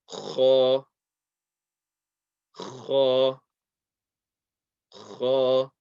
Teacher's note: the makhraj of the letter kha is the top of the throat.